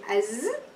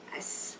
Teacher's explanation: The tongue, your tongue pushes the four upper and lower incisors with a buzzing sound coming between the upper lower teeth for the zay and a whistling sound for the sin